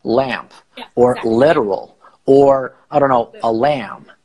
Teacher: the tip of the tongue kind of touches slightly the back of the upper teeth like all lamp or literal or I don't know a lamb